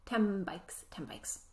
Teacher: the reason why the sound becomes um sound is so that our lips are ready to make the next sound